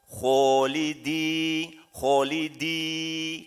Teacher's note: kho ini huruf tebal, maka yang dipakai adalah rahang tebal